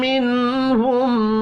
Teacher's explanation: نون ساکن کے بعد ہا ہے، اظہار حلقی ہوگا، غنہ نہیں ہوگا